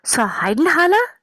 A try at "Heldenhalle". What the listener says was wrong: Helden. Remember the L, yeah?